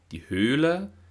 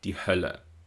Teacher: den Unterschied zwischen dem langen gespannten övokal und dem kurzen ungespannten övokal hören